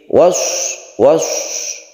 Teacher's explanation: shad itu termasuk huruf isti'la, maka hati-hati. Was, dia berdesis. Kemudian bir, ini sukun ra, sebelumnya ada kasrah, jadi dia itu tarqiq atau tipis.